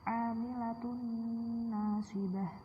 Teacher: domah tanwin bertemu nun, jadi kayak secara tidak langsung itu seperti bertasydid. Ya memang nun juga sudah bertasydid sih. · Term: idgham bi gunnah